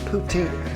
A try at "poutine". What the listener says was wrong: Poutine. You gotta emphasize the tin.